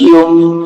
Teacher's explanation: نون نہیں پڑھا جا رہا ہے، میم پڑھا جا رہا ہے، یا کو ڈائریکٹ میم میں ملانا ہے، یا میم پیش یم، اور غنہ کرنا ہے ساتھ میں۔